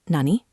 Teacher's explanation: Just say nani with a rising intonation to ask a simple question.